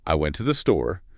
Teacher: The melody is up, down, up.